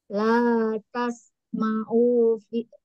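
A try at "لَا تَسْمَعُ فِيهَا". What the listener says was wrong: U-nya pendek. Pendek. La tas ma'ufi. La tas ma'ufi.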